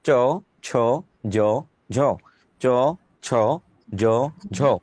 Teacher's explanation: তালু থেকে যে কটা বর্ণ উচ্চারিত হয় তার নাম তালব্য বর্ণ।